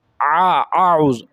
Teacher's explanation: جو یہ عین ہے یہ حلق کے سب سے اوپر والے حصے سے ادا ہوتا ہے۔